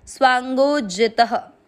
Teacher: त में अ मिक्स किया, त में अ की मात्रा है इसलिए विसर्ग को पढ़ेंगे ह